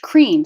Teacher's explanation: The k and the r sound are voiceless.